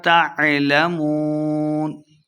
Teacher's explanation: تعلمون واو مدہ ہو رہا ہے، دو حرکات لمبا کریں گے